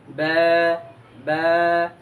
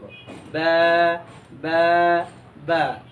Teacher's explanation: দুই ঠোঁটের বিজা অংশ থেকে আমরা বা উচ্চারণ করব বা এবং এক আলিফ আমরা টান দিব বা আমি তিনবার করে